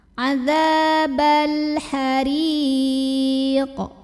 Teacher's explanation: Karena alif lamnya ketemu huruf qamariyah yaitu ha. Maka lamnya dibaca jelas atau diidharkan ya. Atau dia biasa disebut dengan idhar qamari. · Huruf ra dibunyikan secara tarqiq karena ra-nya berbaris di bawah kasrah. Maka bacanya tipis